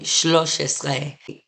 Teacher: That first vowel in shalosh becomes a shva.